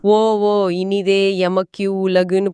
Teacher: அந்த ஓ நீண்டு ஒலிக்கும் இதுதான் அளபடை